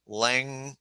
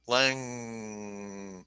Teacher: And the sound comes out of your nose. Your tongue is up on the soft palate. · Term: engma